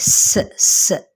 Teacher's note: سین کے اوپر زبر ہے، لمبا نہ کرتے ہوئے نہ ہی مجہول پڑھتے ہوئے اس کی سیٹی کو واضح کرنا ہے